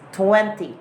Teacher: It's 20. But in British English, T has given emphasis and you really have to pronounce it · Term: T sound is pronounced